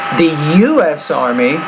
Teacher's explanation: you have to put equal stress on both of those initials